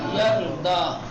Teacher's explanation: را ساکن ہے اس سے پہلے زبر آ گیا تو یہ را کو کیا کریں گے؟ تفخیم کے ساتھ پڑھیں گے